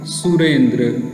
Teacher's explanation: अब र में अ और ई, तो अ और ई मिलकर यहाँ पर ए रूप में परिवर्तित हो गया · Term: गुण स्वर संधि